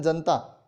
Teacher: जनता में अब हमने न आधा बोला है, न के अंदर ए की मात्रा वो हमने छोड़ दी है। ये ऐसा मुख्य सुख के कारण होता है।